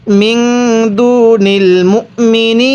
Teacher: এরপরে মিম নুন জের মিং, এই যে নুন সাকিনের পরে দালটি ইকফার হরফ, এই জন্য নুন সাকিনটিকে গুন্নাহ করে পড়ছি। তাহলে মিং দুনিল মুমিনিন, এখানে আমি মুমিনিন পড়ি নাই, অনেকে মিম ওয়াও পেশ মু পড়ি, এরকমভাবে পড়লে পড়াটা সহি শুদ্ধ হবে না।